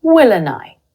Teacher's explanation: I used a schwa when saying Will and I, and I elided or dropped the d sound in and.